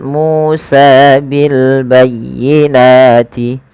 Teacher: MU dan sa harus dipanjangkan sama ya karena Iya Mad thaabii mu panjang dengan wau sukun sa